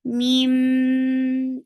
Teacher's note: Mim will get sifa of gunna, and this gunna is akmal. So give a very good time here for gunna.